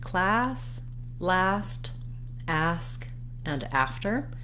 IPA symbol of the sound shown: æ